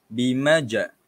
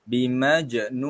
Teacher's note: Kita kena lantunkan pada huruf jim tersebut. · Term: qalqalah